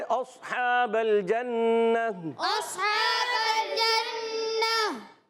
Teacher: صاد کو موٹا کریں گے، موٹا ہی نہیں کریں گے، ایکسٹرا موٹا بھی کریں گے۔